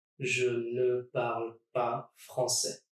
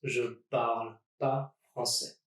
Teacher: when speaking French, you can actually drop that ne as well